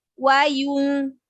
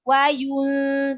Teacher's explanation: Ya-nya domah di sini monyongin tidak sempurna domah tanpa kita memonyongkan mulut. Wayun. Jadi yu-nya monyongin dulu.